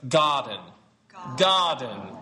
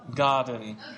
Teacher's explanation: There's no R in garden.